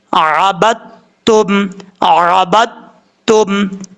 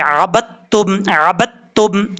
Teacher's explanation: عین زبر آ، با، دال تا زبر بت، جب ہم اس کو پڑھیں گے پہلے پڑھتے ہوئے آپ نے اس طریقے سے پڑھنا ہے کہ ایسے محسوس ہو کہ دال پڑھا جا رہا ہے، دال کی کچھ جو صفات ہے وہ اس میں آئیں گی صفات، اور پڑھی تا جائے گی کیسے عبدتم عبدتم۔